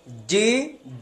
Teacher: জিমের উচ্চারণ একটু শক্ত, জিব্বার মাঝখান থেকে, জিব্বার মধ্যখান উপরের তালু